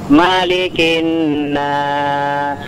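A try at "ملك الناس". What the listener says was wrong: Nah, sinnya jelaskan.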